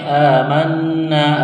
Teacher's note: نون مشدد ہے، غنہ کریں گے، آواز ناک میں چھپائیں گے